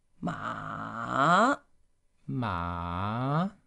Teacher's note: it's falling, rising. It starts from here, going down, and then up.